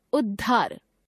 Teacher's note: यदि त द व्यंजनों के बाद ह व्यंजन आता है तो त द का परिवर्तन द में तथा ह का परिवर्तन ध में हो जाता है